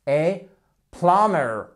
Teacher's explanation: On ne prononce pas le B. Oui, c'est un de ces mots en anglais où le B n'est pas prononcé, mais il est bien écrit.